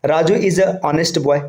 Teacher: भले ही ये एच से स्टार्ट हो रहा है लेकिन जो इसका साउंड आएगा ये ऑ का आएगा, मतलब ये वॉवेल साउंड दे रहा है।